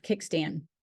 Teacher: raising the back of the tongue to the soft palate, creating a complete closure, blocking the airflow through the mouth